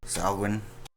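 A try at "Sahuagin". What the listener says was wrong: Yeah. You just ignored a U.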